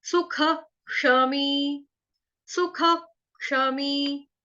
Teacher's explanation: सुख के आगे जो विसर्ग है उसका उच्चारण होगा ह से